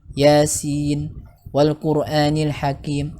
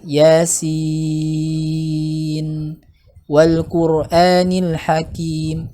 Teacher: Sin itu wajib dibaca panjang enam harokat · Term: madlazim